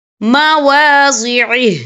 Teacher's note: وقف کی صورت میں ہا ساکن ہو جائے گا